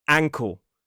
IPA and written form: ˈʌŋkəl (uncle)